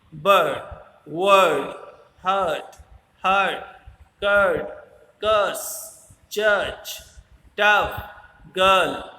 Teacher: इनके बीच में एक आर साउंड आर वर्ड आएगा, पर आर वर्ड प्रोनाउंस नहीं होता इंग्लिश में तब तक जब तक उसके आगे कोई वाउल साउंड नहीं आए।